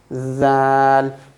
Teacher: The tip of the tongue will connect to the edge of the front teeth.